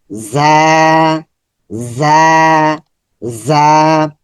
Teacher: জিহ্বার আগা সামনের নিচের দাঁতের গোড়াতে স্পর্শ হবে, একটু শক্ত হচ্ছে।